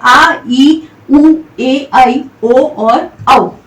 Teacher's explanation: क्योंकि इनके उच्चारण में जो समय लगता है, निकलने वाली ध्वनि में जो समय लगता है वो लगता है मूल स्वर से दुगुना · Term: दीर्घ स्वर